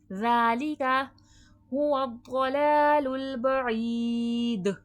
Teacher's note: دال میں ساکن کے وقت قلقلے کی صفات واضح ہوگی، آواز پلٹ کر سنائی دے گی